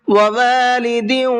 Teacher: وَوَالِدٍ وَمَا وَلَدَ، وَوَالِدٍ، دال کے نیچے تنوین ہے اور تنوین کے بعد میں واو آ رہا ہے، تو تنوین کے بعد میں اگر واو آتا ہے تو وہاں پر غنہ کر کے پڑھتے ہیں۔